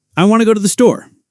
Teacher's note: Want to became wanna, and the words flowed together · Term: connected speech